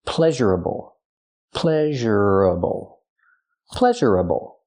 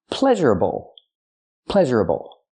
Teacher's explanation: change pleasure into an adjective the adjective is pleasurable pleasureable pleasurable four syllables the primary stress on the first syllable